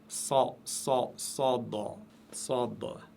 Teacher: Sad, sad, c'est le S de la langue française prononcé très lourdement.